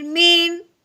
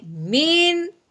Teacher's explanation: نون ساکن پہ غنہ بالکل نہیں کرنا، بلکہ بغیر غنے کے اظہار کے ساتھ ہم نے پڑھنا ہے